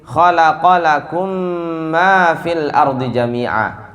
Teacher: Mim ketemu dengan mim. Khalaqalakum ma fil ardi jami'a. Ya, khalaqalakum ma fil ardi jami'a. Satu mim jadinya. Ya, digunahkan. Itu namanya idgham mutamatsilain.